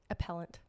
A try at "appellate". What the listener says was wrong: Appellate. First of all, it's no N. Appellate. I thought you said appellant. Appellate judges.